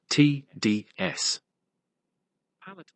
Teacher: alveolar sounds produced with the tongue at or near the ridge right behind Upper Front Teeth